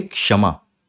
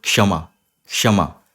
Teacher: थोड़ा सा का है बोलने में और ज्यादा यह श है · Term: संयुक्त व्यंजन